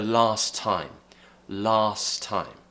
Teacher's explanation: we're doing is we're kind of molding the two words together dropping one of those T's or the final T at the end of that word first and kind of just joining them together